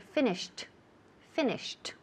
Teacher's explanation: Aunque se escribe con ed, suena like a T.